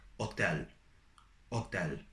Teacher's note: H is silent in Italian, so you never pronounce it